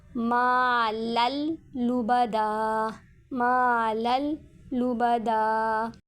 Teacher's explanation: تنوین کے بعد حروف یرملون میں سے لام آ رہا ہے تو یہاں پر بھی ادغام ہوگا غنہ کے بغیر